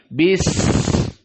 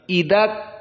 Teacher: Kafnya ini tidak ada suara setelahnya. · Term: syiddah